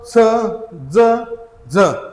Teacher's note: या वर्णाचा उच्चार आपल्या टाळूच्या म्हणजे टाळूला जीभ स्पर्श होऊन याचा उच्चार होतो